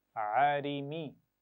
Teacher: आइन के मखरज का भी ख्याल रखना है, गले के दरमियान से अदा करना है उसको सही तरह, और रा को बारीक पढ़ना है ज़ेर के साथ।